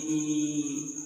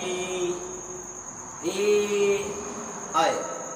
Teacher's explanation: इसको बोलने में जीभ का आगे वाला भाग काम करता है, यानी ये अग्र स्वर।